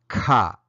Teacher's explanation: Next, an aspirated K sounds like ka.